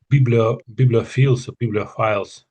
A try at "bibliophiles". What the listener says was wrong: Yeah, the files. So biblio and then files. That's it. Yes, bibliophiles.